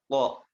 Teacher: Nah, ke huruf to baru itu posisi rahang kita atau lidah kita itu dikondisikan naik ya, tafkhim, tebal. To, bahkan to itu memiliki sifat khusus yaitu sifat itbaq ya.